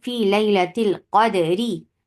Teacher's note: حرف را پر روم کے ساتھ وقف کرنے میں تفخیم اور ترقیق کے قواعد حالت وصل کے مطابق لگائے جاتے ہیں، جیسے فی لیلۃ القدری، عند الوصل جب ہم اس کو سٹاپ نہیں کریں تو را یہاں کیا ہوگا بتائیے؟ یہ را تو یہ باریک ہوگا، لائٹ ہوگا